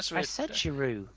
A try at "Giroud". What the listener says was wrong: No, you didn't. You said the D at the end.